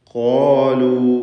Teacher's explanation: ഖാഫും അതിൻ്റെ ദീർഘാക്ഷരമായ അലിഫുമാണ്. ഇവ രണ്ടും തഫ്ഖീം ചെയ്ത് സ്വരഭാരത്തോടെ ഉച്ചരിക്കണം. ഖാലു എന്ന് പാരായണം ചെയ്യണം.